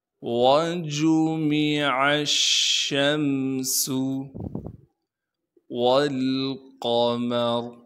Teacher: شین کو آگے میم ساکن سے ملائیں گے بغیر غنہ کے، سین کی سیٹی کو صاف کر کے ادا کرنا ہے بغیر کھینچے